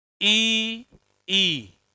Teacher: फेफड़ों से निकलने वाली वायु ऊपर तालू में इकट्ठी होगी ऊपर इकट्ठी होने के बाद मुख से बाहर निकलेगी बोल के देखना ऐसा होता है क्या ई ई धवनी कहां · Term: तालव्य वर्ण